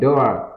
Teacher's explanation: The door, âm door, chúng ta nhớ cái miệng nhỏ nhé, âm open o và đi với âm r đó